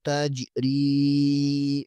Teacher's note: را زیر کے آگے یا مدہ ہے یہاں پر 1 الف کے برابر کھینچیں گے